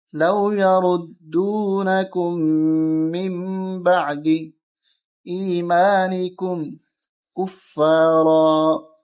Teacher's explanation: یہاں اقلاب کا قانون لگ رہا ہے کہ نون ساکن کے بعد با آ رہا ہے، اس وجہ سے اس نون کو نہیں پڑھیں گے، میم کو پڑھیں گے